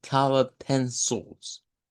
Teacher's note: Ahora, en la parte de colored, esa suena con lo que sería un L, con una vocal O que suena como una mezcla entre A y U. Ahí tendríamos lo de colored pencils.